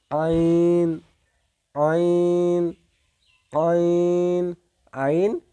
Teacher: কণ্ঠনালীর মধ্যভাগ হইতে উচ্চারিত হয়